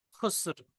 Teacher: র সাকিন হয়ে যাবে, রর কিছু অংশ আদায় হবে